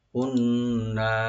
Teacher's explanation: নুন মুসাদ্দাদ গুন্না সহকারে একালিফ টানবেন।